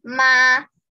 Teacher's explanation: first tone would be like this straight line